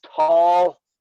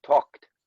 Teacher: as soon as we hear the k we lose the l